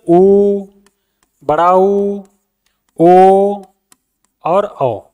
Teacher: उ बोला तभी मुंह की आकृति गोल होती है, वृत्त के समान गोल होती है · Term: वृत्तीय स्वर